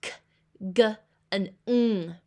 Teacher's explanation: the sounds made by the back of the tongue and the soft palate, or the roof of the mouth, that makes the sounds k, g, and ng